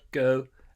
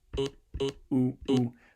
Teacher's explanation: It's going from like a fronted O to a back oo.